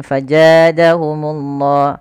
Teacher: harusnya ada aliran suaranya Faza dan dia sifatnya jahar jahar itu tertahannya nafas tapi mengalirnya suara